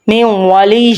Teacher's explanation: لک من اللہ من ولی، اب یہاں پہ نون ساکن ہے، ہم نے نون ساکن کو نہیں پڑھا، ہم نے واو تشدید والے سے اٹیچ کیا ہے میم کو